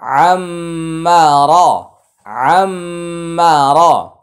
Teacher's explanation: র এর উপরে জবর হলে র মোটা